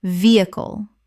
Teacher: muscle muscle Word 197 vehicle Common mispronunciation veh-icle Correct pronunciation vehicle Three syllables with the H almost completely silent. The stress is on the first syllable.